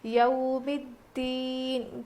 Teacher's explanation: حروف لین ہے نا، اس لیے ہم نرم آواز کے ساتھ جلدی ادا کر کے پڑھیں گے. یو ہوتا ہے، یا واو زبر یو نہیں بلکہ یا واو زبر یو ہوتا ہے.